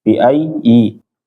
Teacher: Kalau dia ada di ya pertama, bacaannya menjadi bi ayyikumul maftun, tapi ini di ya kedua ya Bapak, langsung masuk ke ya kedua tanpa ditahan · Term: tasydid